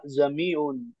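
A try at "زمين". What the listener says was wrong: नहीं नहीं आप थोड़ा सख्ती ले रहे उसको सख्ती मत लीजिए नरमी से अदा करिए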